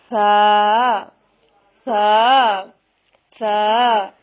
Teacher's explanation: سا کی ادائیگی میں زبان کی نوک کو سامنے والے اوپر کے 2 دانتوں کے اندرونی کناروں سے نرمی سے لگا کر باریک آواز میں پڑھنا ہے